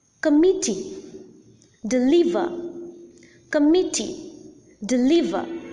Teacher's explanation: in it committee deliver committee deliver there are three syllables and the middle syllable or the second syllable is the most prominent syllable and hence the second or the middle syllable is the stressed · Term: stressed syllable